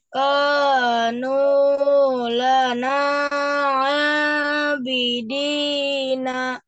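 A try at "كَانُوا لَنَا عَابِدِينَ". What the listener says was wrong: Itu nu-nya panjang juga. Kanu lana abidina.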